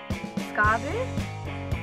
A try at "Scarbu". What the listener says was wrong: You have to roll your R's. Scarbu.